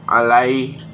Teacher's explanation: Pada lafaz alaihim terdapat mat lin karena huruf ya sukun didahului huruf lam berharokat fathah, dibaca panjang 2 harakat